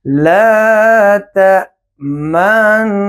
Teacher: اس میں اشمام کریں گے، یعنی ہونٹوں کا سرکل بنائیں گے